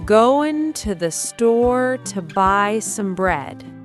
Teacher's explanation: But store and bread are loud and long.